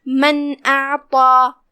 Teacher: हर्फ अलिफ हुरूफ इज़हार में से है, लिहाजा हम नून को ज़ाहिर करते हुए बगैर गुन्ना की ये हुक्म को अदा करेंगे